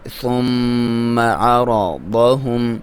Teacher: میم پہ شد ہے، غنہ کریں گے، ناک میں سے آواز ایک الف کی برابر لمبائی